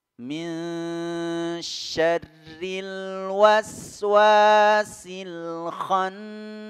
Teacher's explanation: nun tasdid, ya, ini tajibul gunnah. Jadi wajib didengungkan, ditahan 2 harakat.